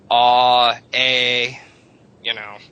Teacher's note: if you go ah, A, you're going up in the mouth again